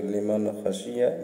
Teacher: نون ساکن کے بعد یہ خا حروف حلقی میں سے ہے، تو یہاں بھی بلا غنہ کے پڑھیں گے، غنہ کر کے نہیں پڑھیں گے، یعنی کہ لمن خشیہ، لمن اس طرح نہیں کرنا ہے بلکہ لمن خشیہ بلا غنہ پڑھیں گے۔